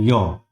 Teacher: य का उच्चारण जब हम करते हैं तो हमारी जीभ दोनों ओर से तालु को स्पर्श करती है और यह तालव्य वर्ण होता है